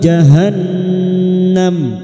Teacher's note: nun yang bertasdid gunnah musyaddadah kita dengungan selama 3 harokat.